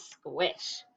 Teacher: Sometimes I see people that think the qu sound is a k sound, but that would say skish.